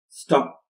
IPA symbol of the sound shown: p̚